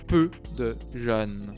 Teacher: Le E s'ouvre au fur et à mesure, comme si vous descendiez une marche d'escalier à chaque syllabe.